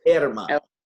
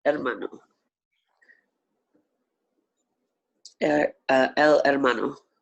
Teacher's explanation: And the H is silent in Spanish, so you'd say hermano.